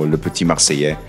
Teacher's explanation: Marseillais, the double L should be a Y sound, like a Y sound.